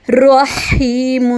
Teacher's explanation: یہاں پہ را ہیوی ہے، اور ہا کو گلے کے درمیان سے